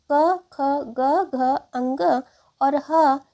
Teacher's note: अ आ अह और क वर्ग यानी क ख ग घ अंग और ह यह सभी कंठ व्यंजन के अंतर्गत आते हैं